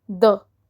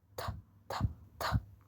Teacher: TH also has two sounds. So, the first sound is the voice sound, the. The other sound is the unvoiced sound, th, th, th.